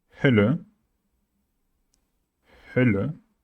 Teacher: it's all about shaping your mouth like saying an O at the beginning and then trying to say an E.